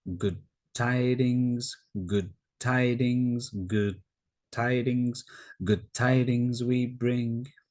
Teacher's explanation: Often when d and t are together, the d is taken out. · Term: d sound being taken away